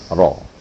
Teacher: kalau menebalkan ro itu ya lidah kita diangkat